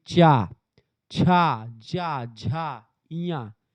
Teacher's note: तालु पे जाकर के आपकी जीभ टकराती है।